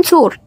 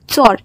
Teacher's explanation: ওকারের উচ্চারণ অকারের মত হয় যেমন চোর এই শব্দটা ঝাড়খন্ড উপভাষায় চর এইভাবে উচ্চারিত হবে অল্পপ্রাণ